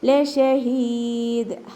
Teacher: ഹ തൊണ്ടയുടെ ഏറ്റവും അവസാന ഭാഗം അക്സൽ ഹൽക്ക്